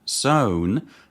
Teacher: In zone, the tongue approaches the alveolar ridge, allowing the airflow to pass through a narrow gap, producing a fricative